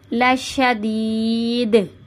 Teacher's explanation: کلکلا کر، یہاں پہ دال کی آواز کو پلٹ دیں گے، یہاں پہ دال جو ہے وہ ساکن ہو جائے گا اور آواز پلٹ کر آئے گی